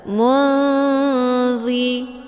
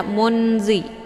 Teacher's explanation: nunnya disamarkan kemudian siap-siap menuju ke huruf dha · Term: ikhfa awsat